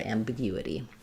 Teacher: And then we'll flap that T. Sounds like a light D sound.